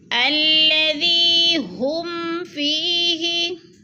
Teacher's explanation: ہم پہ اظہار ہو رہا ہے، اظہار شفوی، ادھر اخفا نہیں کریں گے